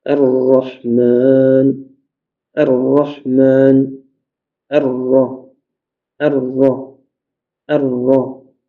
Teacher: quand tu as la shadda sur le ra, il faut que tu amoindris la répétition du tremblement de la langue et tu n'augmentes pas. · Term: takrir